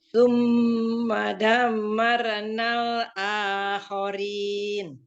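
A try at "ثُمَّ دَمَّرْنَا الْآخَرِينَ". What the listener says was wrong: Summa agak dilamain lagi mimnya Maronal. Marna. Jadi ketika ro sukunnya jangan ditambahin dre, Bu. Bukan Ibu itu gini, kecenderungannya gini, marenal gitu loh. Jangan pakai re, tapi maronal.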